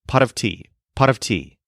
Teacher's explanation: if you say it fast enough the T at the end of pot turns into a quick little tongue flip exactly like the Spanish letter r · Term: flipped r